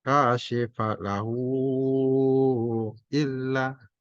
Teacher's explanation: Dibaca 5 harokat karena ada mat, setelah mat ada alif. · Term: mat jais munfasil